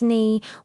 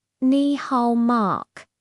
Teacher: It also has a third tone, so practice that falling rising sound.